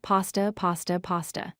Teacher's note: Pasta sounds like pasta. Start with PAH like father. Short S sound. End with tuh. Stress first part, PA sta.